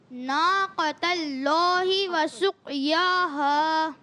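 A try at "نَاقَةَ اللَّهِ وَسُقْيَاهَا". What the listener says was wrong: قاف کو پر رکھنا ہے، کلکلہ بھی ادا کرنا ہے.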